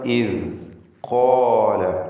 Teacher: ഖാഫിനും അലിഫിനും തഫ്ഖീം കൊടുക്കുക.